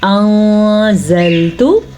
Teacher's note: نون ساکن پہ اخفا کریں گے، یعنی کہ چھپائیں گے اور غنہ بھی کریں گے